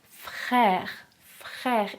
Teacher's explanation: ici les lèvres sont étirées C'est une voyelle orale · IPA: [ɛ]